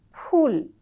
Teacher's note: দুই ঠোট একসঙ্গে মিলবে না। ইংরেজি এফ উচ্চারণ করবে। · তখন তারা উচ্চারণ করবে, শতকরা একেবারে বলা যায় 90% উচ্চারণ করবে ফুল, 2 ঠোঁট একসঙ্গে মিলবে না, ইংরেজি এফ উচ্চারণ করবে। অথচ তারা কিন্তু খুব ঠিকভাবেই জানে যে ফুল ওষ্ঠধ্বনি, এটি উচ্চারণ করতে গেলে 2 ঠোঁট একসঙ্গে মেলবে।